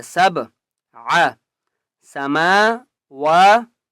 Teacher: با کے اوپر قلقلہ کریں گے